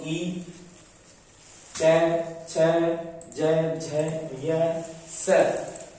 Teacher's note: ई का उच्चारण करने पर हमारे जो मुख से ध्वनि निकलेगी वो तालु से निकलेगी